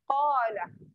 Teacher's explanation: Qala kena tekan di pangkal lidah. Ini kena tekan dekat pangkal lidah.